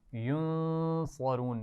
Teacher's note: نون ساکن کے بعد صاد ہے اس لیے یہاں پر غنہ کر رہے ہیں اور اس میں صاد اور را دونوں کو موٹا پڑھنا ہے.